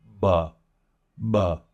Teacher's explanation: And this is just going to build up just a slight pressure inside of your mouth that then you're just going to open and release. It shouldn't be a strong release. It should be a rather soft release. Buh, buh. You might feel a bit of a puff of air, but not anything like you will when we get to the P.